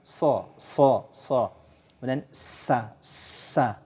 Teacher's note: dia tajam Ya seperti suara siulan